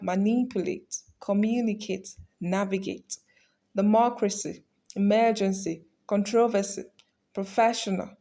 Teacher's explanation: they are all stressed on antepenultimate syllable or the third to last syllable